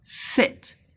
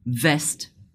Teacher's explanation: lower lip living a narrow space for the air to pass voiceless as in fit and voiced as in vest